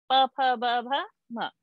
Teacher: So all vargiyas, the fifth, that is the anunasika, it comes in the nose.